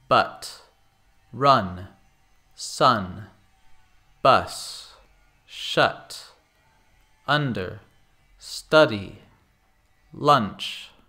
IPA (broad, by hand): bʌt rʌn sʌn bʌs ʃʌt ˈʌndər ˈstʌdi lʌnʧ